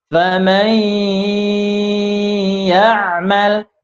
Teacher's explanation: Ketika faman, masukkan ke ya, kemudian didengungkan. Masukkan terlebih dahulu ke huruf ya, kemudian didengungkan. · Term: gunnah